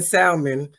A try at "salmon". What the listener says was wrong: I know you don't eat it because you pronounce the L. It's just salmon. It's not salmon.